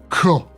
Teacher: So K, made near the back of the palate.